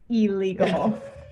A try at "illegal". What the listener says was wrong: Like it starts with an E.